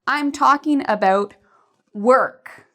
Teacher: again work is louder and longer and when they hear the word work it will be easier